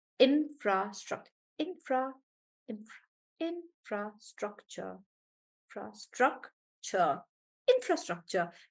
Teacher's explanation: even though it is four syllable it seems like the stress is on infra infrastructure still on infra um let's take uh rohan's example of